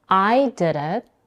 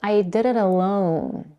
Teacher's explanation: Basically, you can think of these two phrases as I did it, where the emphasis is on I, and I did it alone, where the emphasis is on alone